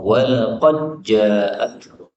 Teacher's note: dal ketemu jim boleh idgham